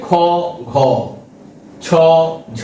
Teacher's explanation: মহাপ্রাণ হচ্ছে বর্গের দ্বিতীয় এবং চতুর্থ ধন। মহাপ্রাণ কেন? না এইগুলো উচ্চারণের সময় আমাদের শ্বাসবায়ু অপেক্ষাকৃত বেশি লাগে। সেজন্য একে বলছি আমরা মহাপ্রাণ। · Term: মহাপ্রাণ ধ্বনি